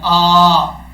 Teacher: حمزہ کے اوپر کھڑا زبر ہے، اس کو ایک الف کی مقدار لمبا کریں گے